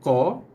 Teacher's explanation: Okey, huruf qa datangnya daripada kawasan pangkal lidah. Sebab tu bila sebut huruf qa, kita akan rasa ada sedikit tekanan pada pangkal lidah kita ni. Pangkal lidah kita ni kita akan rasa ada sedikit pressure sikit kat situ.